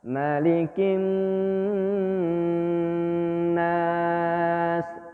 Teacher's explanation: Kin ada nun bertasydid dengung.